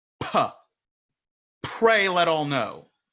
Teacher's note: no air is coming out, and you kind of build up that air and release it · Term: Plosive consonants